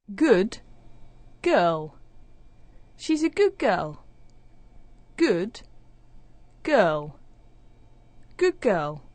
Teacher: the d sound at the end of good is becoming like the g sound at the start of girl it doesn't actually disappear it actually sounds like a g so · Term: assimilation